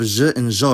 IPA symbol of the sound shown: ʒ